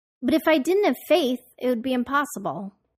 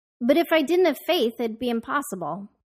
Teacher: To tell the listener that we are done with our sentence, the musical note of our speech will go up on the last stressed syllable in impossible and then all the way down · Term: Intonation